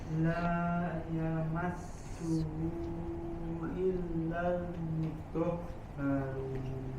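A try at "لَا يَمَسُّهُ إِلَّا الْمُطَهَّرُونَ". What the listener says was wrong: Sinnya jelaskan ya, alirkan suaranya yamassuhu. Nah, sama huruf haknya Dok, dilatih dari pangkal tenggorokan mutahharun. Belum kena makhrajnya.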